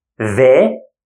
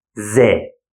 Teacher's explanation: So the, we bring the tongue out, Z, we never bring the tongue. This is the only difference between them.